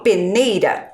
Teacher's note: Olha lá, quando eu falo peneira, eu falo um R fraco, não falo? O R está entre vogais, mas eu falo ele fraco.